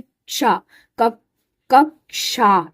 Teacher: इसमें क और श मिला इसलिए इसकी साउंड में भी क और श की आवाज आती है, क्षा, कक्षा ऐसे बोलते हैं ना।